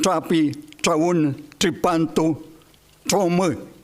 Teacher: explosiva, impura, ápico dental, africata, la vulgar chilena o inglesa de Londres